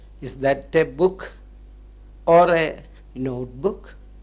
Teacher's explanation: mixed kind of intonation where we have the rising falling intonation